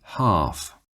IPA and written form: hɑːf (half)